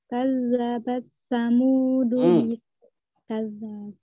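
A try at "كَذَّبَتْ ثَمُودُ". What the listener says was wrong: Itu dikasih hamas ya. Dikasih taknya, jangan dijadikan idgham. Bukan idgham mutaqaribain. Waktu itu kita bahas kan aslinya idgham bukan idgham mutaqaribain. Naam, idgham mutajanisain atau mutaqaribain. Aslinya semuanya dibaca izhar. Cuman dikecualikan ya pada huruf-hurufnya yang berdekatan makhrajnya sama makhrajnya beda sifatnya begitu ya. Tak sama sa di sini kan berdekatan, betul? Sama di ujung lidah. Nah, tapi ini tetap dibacanya hamas. Kadzabat samudu.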